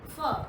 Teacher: लेकिन फ बोलते समय आपके ऊपर वाले दांत नीचे वाले ओंठ पर टकराते हैं, फ। दोनों ओंठ आपस में नहीं टकराते। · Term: नुक्ता लगाने के बाद फ